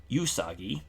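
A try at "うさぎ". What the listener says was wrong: Usagi. There's no U. No Y sound.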